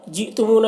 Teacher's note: یہاں پر حمزہ ساکنہ ہے تو جھٹکا لگے گا۔